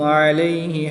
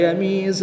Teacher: یا ساکن سے پہلے زبر ہے تو یالین یا ساکن سے پہلے حرف پر کے نیچے زیر ہے تو یا مدہ. یا لین کو بغیر لمبا کیے نرمی سے پڑھیں گے اور یا مدہ کو ایک الف یعنی 2 حرکات کے برابر کھینچ کر پڑھیں گے